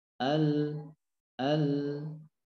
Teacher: dari huruf lam ya ujung lidah kita menempel di langit-langit bagian depan